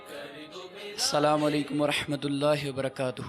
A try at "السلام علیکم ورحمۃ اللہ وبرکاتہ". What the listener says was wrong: دوبارہ کیجئے، واو مت کھا جائیے، سنت. واو کو واضح کیجئے.